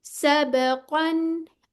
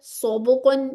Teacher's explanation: इसमें होंठ गोल नहीं होने, इसकी आवाज भी मोटी आ रही है